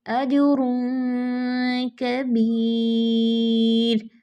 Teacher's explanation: را ساکن سے پہلے یا ساکن تھا، تو یہ باریک پڑھا جائے گا · اب یہ تنوین کے بعد کاف تھا تو اس میں آواز بہت زیادہ ناک میں جاتی ہے اور کم سے کم چھپتی ہے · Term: غنہ